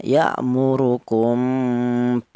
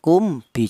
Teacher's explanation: mim mati ini cara bacanya disamarkan. Karena apa? Karena mim mati ini berjumpa dengan huruf ba. · mem mati ini cara bacanya disamarkan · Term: ikhfa syafawi, ikhfa safawi